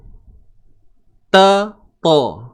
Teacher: Hujung lidah akan pergi ke pangkal gigi. Tempat tumbuh gigi.